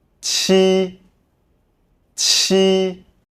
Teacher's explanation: The pronunciation of 七。 is similar to that of 鸡。 but with a stronger airstream, as 七。 is an aspirated sound. While 鸡。 is inaspirated, the sound is produced when the tongue separates from the front part of the hard palate, creating a moderate gap.